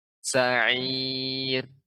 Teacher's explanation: Kemudian getaran ro itu halus dan sedikit.